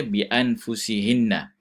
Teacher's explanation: nun mati bertemu dengan nun. Adalah hukum idgham kan? Itu kena baca dengan dengung lah. Idgham bi gunnah.